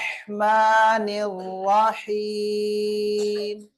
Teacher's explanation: ராக்கள் எல்லாமே முபஹாமா வல்லினமாக ஓத வேண்டும்